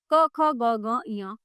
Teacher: क वर्ग, क ख ग घ ञ, ये कंठ से बोले जाते हैं।